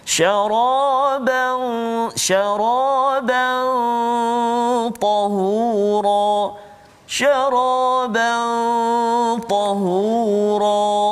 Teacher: Huruf ta hujung lidah, and then ditekan dekat gigi kapak atau gigi kacik belakang tu kan.